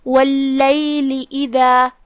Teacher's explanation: واللیل اذا، کلمت اذا میں یہاں حرف الدال ہے، دال کی ادائیگی زبان کے سر اور اوپر والے دانتوں کے اندرونی کناروں سے ہے